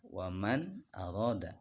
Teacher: nun matinya dibaca jelas, tidak boleh dibaca dengung. Jadi nggak boleh dibaca waman arada.